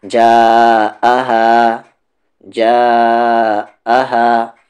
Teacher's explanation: 3 سے 4 حرکت کے ایکول کھینچنا ضروری ہے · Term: کنیکٹڈ مد